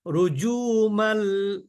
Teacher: লিশায়াতিন এখানে দেখেন এদগমের অক্ষরের উপরে কি আছে তাজদিদ আছে এখানে গুন্না হবে না কিন্তু মিলিয়ে পড়তে হবে